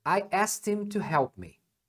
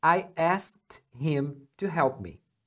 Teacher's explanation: na linguagem falada acontecem algumas coisas por exemplo o him eles omitem o h